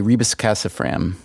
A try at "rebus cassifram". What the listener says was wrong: Rebus cassifram. More like one word.